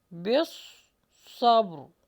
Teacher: پھر با پر قلقلہ ہوگا اور را کو جما کے سٹاپ کریں